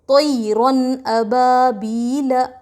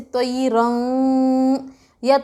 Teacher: تو یہ جو طیرن میں آخر میں جو نون کی آواز ہے اس کو جلد ظاہر کر کے پڑھیں گے، جلد ظاہر کر کے پڑھیں گے، یعنی نون کی آواز کو ناک میں نہیں لے جائیں گے